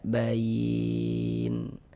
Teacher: Karena berwakaf di huruf yang tidak dibaca panjang maka hurufnya ini kita sukunkan. hurufnya itu kita matikan sehingga kita baca bain seperti itu.